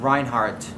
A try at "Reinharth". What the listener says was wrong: TH at the end.